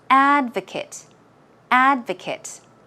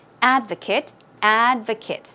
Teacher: in the noun form the stress goes on the first syllable